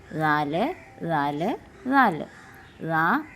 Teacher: ദാലിന്റെ ഉച്ചാരണസ്ഥാനം നാക്കിന്റെയും മുൻപല്ലുകളുടെയും പുച്ചങ്ങളാണ് പുച്ചങ്ങൾ എന്ന് വെച്ചാൽ അറ്റങ്ങൾ അറ്റങ്ങളാണ് ദാലിന്റെ ഉച്ചാരണ സ്ഥാനം ഇനി നമുക്ക് ആക്ടിവിറ്റി